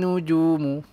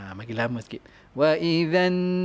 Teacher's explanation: ni ada gunnah musyaddadah, wajibul gunnah, maka bagi masa lama sikit